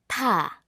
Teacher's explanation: ta requires us to push out a lot of air